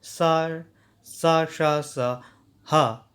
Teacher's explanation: वहीं सा, सा, शा, सा, हा, ये ऊष्म कह जाते हैं। इनको बोलते हुए गर्म जो है ऊष्मा अंदर से निकलती है, इसीलिए इसको ऊष्म कहा जाता है